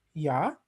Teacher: Single words are pronounced ingressively. For instance, Swedish ja.